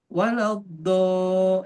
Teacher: Ujung lidah. dal itu di ujung lidah di depan. Makanya ketika kita baca misalkan waladolin, do tapi pakai dal.